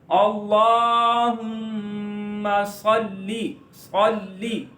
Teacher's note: लाम पर थोड़ा सा रुकेंगे, लाम को एक अलिफ इतना लंबा करेंगे, मीम पर गुन्ना करेंगे, और इस लाम पर भी थोड़ा सा रुकेंगे।